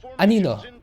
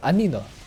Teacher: The second syllable is where the stress is.